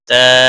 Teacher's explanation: تا الف مدہ ہے، 1 الف کے برابر کھینچ کر پڑھیں گے